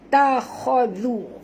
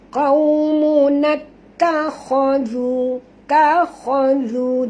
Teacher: kha ni tebal. Jangan baca khazu tapi kha.